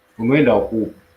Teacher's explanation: Each vowel is pronounced separately, even if they fall in succession. For example, unaenda huku, where do you go?